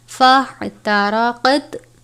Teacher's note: بعد فا ہے، فا حرف اخفا میں سے ہے، فا احترقت، فا کو ہا سے ملا کر ادا کرنا ہے، فا نہیں پڑھنا بلکہ فا ہا کی آواز کے ساتھ پڑھنا ہے